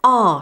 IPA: ɑː